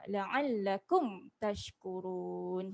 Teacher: La'allakum ni mim mati ada tanda sukun. Kita tak baca dia dengan dengung ya. Kita baca dia dengan jelas. Jangan dengung kat sini.